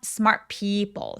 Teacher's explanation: T 소리 살짝 내도 되고 혹은 smart people 이런 식으로 어 t 대신에 소리를 살짝 끊어내는 느낌으로 받침이 있는 것처럼 smart people 해 주시면 됩니다.